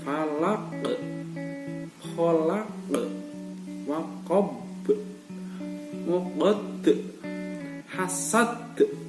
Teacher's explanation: Jadi kelima-limanya dari ayat 5 ini 1 sampai 5 dari surat Al-Falaq ini semuanya di akhir ayat itu dibaca qalqalah kubro, jadi dipantulkan agak tebal